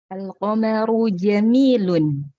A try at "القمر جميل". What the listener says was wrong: أحسنتي ما شاء الله.